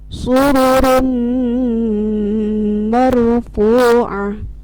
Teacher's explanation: Jadi idgham ma'al guna ini bila nun mati atau tanwin bertemu dengan huruf nun, ya, mim dan wawu, maka ditahan, masuk dulu kemudian ditahan 2 harokat. Jadi ada suara dengungnya atau suara gunnahnya.